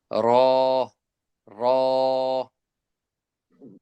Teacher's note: জিহ্বার আগার পিঠ তার বরাবর উপরের তালুর সঙ্গে লাগাইয়া